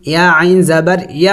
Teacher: عین بھی حروف حلقی میں سے ہے اور حلق کے وسط حصے سے ادا ہوگا، یعنی درمیانی حصے سے ادا ہوگا۔